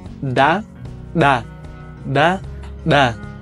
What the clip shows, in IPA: da, ɗa, da, ɗa